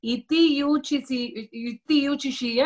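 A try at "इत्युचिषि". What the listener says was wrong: Ityuchishi. When you're saying it together, it's ityuchishi. Iti is thus having said thus iti uchishi. But when you join it, it becomes ityuchishi. Ityuchishi. Okay, when you're saying it, you say ityuchishi.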